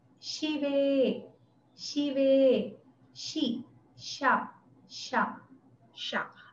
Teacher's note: Она похожая чем-то на нашу «щ», только чуть более мягкая. Попробуйте среднее что-то между «щ» и «с» произнести.